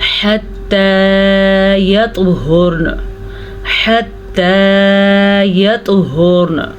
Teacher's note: حتی یطہرن، حتی یطہرن، جی توا پہ کلکلا ہو رہا ہے کیونکہ توا پہ پھر سے جزم ہے ہمارے پاس، اس لیے ہم یہاں پہ کلکلا کریں گے.